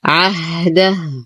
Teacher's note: وقفا نقف على الهاء بالسكون، ووصلا توصل الهاء بواو مدية مشبعة تمد بمقدار 6 حركات لأن بعدها همز